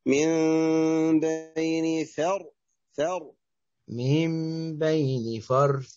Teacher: فخم الراء الساكن مفتوح ما قبلها